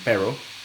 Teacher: Por otro lado, tenemos las realizaciones una realización retrofleja de R, como ya les digo, gente que por ejemplo, hablantes de inglés como primera lengua que están aprendiendo español, en lugar de decir pero, dicen pero, y entonces hacen una realización retrofleja